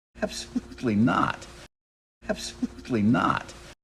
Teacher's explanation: release of a true tea here at the end absolutely not he's really stressing not he doesn't want to drop that final release